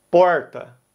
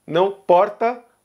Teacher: onde eu cresci a gente usa o r retroflexo